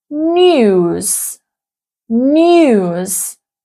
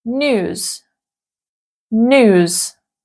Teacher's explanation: Another pronunciation difference is yod dropping. So in British English, we would pronounce news, news.